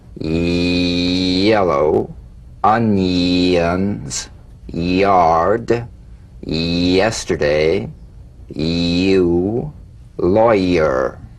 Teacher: feel the y buzz quickly cut off as it slides into the following vowel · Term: resonant Y